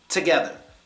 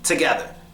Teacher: The first O gets the schwa.